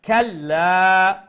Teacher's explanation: Lam has a shadda. So double letter, double sound.